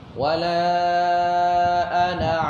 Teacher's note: Ana tu dalam hukum tajwid, kalau kita baca wasal, dia mesti kita baca dengan pendek. Wala ana pendek.